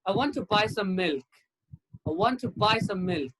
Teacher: i did not stress i i did not stress to i did not stress some